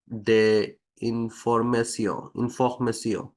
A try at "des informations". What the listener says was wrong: ফরাসিতে আইএন ইন কে কখনোই ইন বলবেন না, ওটা সবসময় হবে, ঠিক আছে? It's not ইন, forget English. আইএন কে সবসময় হবে, এটা নাসাল নাকের মধ্যে থেকে সাউন্ড আসে।